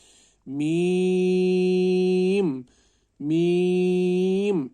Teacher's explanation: मीम, बहुत सारे मीम को नाक से आवाज़ निकालते हैं, लेकिन नाक से आवाज़ निकालने से मजहूल बनता है और हमें इसकी आवाज़ को मुंह से निकालना है, ना कि नाक से